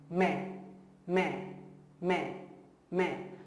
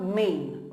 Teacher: in the मैं you see the N, that N is not fully pronounced